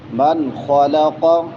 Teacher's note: من نون ساکن بعد میں خا ہے حروف حلقی میں سے اظہار ہوگا. من خلق خا بھی موٹی اور قاف بھی موٹا ہوگا.